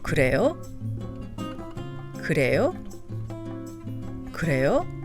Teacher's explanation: in the form of a question which is marked with the rising intonation